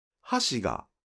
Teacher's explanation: For example, in “hashi ga,” the pitch is high on “ha” and then drops afterward.